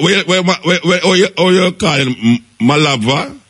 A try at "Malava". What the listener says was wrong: Malava, pronounce it without a B.